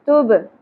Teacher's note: یوم میم کے اوپر زبر ما نہیں پڑھنا زیادہ نہیں کھینچیں گے زبر کو. یوم تب با ساکن پہ قلقلہ ہوگا تا باریک پڑھیں گے